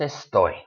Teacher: The stress goes on that last syllable.